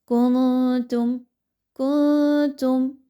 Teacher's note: نون کی آواز کو کلیئر نہیں پڑھنا، چھپائیے اور واضح نہیں پڑھنا۔ کنتم کنتم، ٹھیک ہے، اس طریقے سے۔